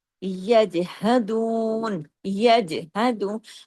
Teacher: यज जीम पे आप कलकला कर रहे हैं